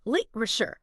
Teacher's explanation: that middle A, it tends to become a schwa, that relaxed sound